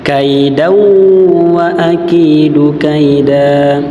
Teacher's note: Kaida tanwin bertemu dengan huruf wa, maka dia idgham. Nun tanwinnya dibaca seperti huruf idgham, yaitu da menjadi dau